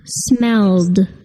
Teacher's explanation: The ed verb ending sounds like a d, smelled.